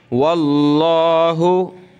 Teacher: लफ्ज़ अल्लाह से पहले वाव पर ज़बर है तो इसको मोटा करेंगे